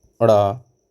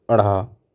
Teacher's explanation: दोनों ही व्यंजन सघोष हैं, जबकि अड़ा अल्पप्राण तथा अढ़ा महाप्राण है